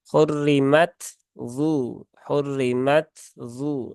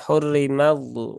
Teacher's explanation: boleh dibaca dengan ee dengan Idgham tetapi harus dibaca dengan izhar maka huruf tnya tidak boleh diidgamkan ke huruf d